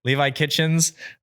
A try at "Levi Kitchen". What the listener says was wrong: Not Kitchens, dude. Are you serious? You're saying plural.